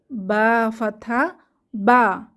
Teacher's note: দুই ঠোঁটের ভেজা অংশ এক হয়ে যাচ্ছে এবং ঠোঁট থেকে কোন বাতাস বের হবে না